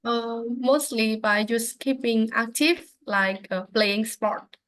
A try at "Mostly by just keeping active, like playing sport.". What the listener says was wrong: Okay, great. Excellent English.